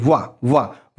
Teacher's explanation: हमारा जो नीचे वाला ओठ है ना वो दांत से टकरा रहा है, तो ओठ और दांत दोनों मिलकर के इस शब्द का उच्चारण कर रहे हैं, इस वर्ण का, तो ये क्या हो जाएगा? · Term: दंतोष्ठ